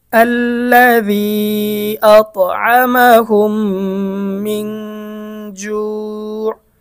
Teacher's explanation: মিম সাকিনের পরে মিম আসলে উক্ত মিম সাকিনকে গুন্নাহের সাথে মিলিয়া পড়িতে হয়। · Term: মিম সাকিনের ইদগাম